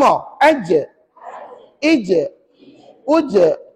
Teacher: Rupa-rupa nak sebut jim guna tengah lidah. Tengah lidah.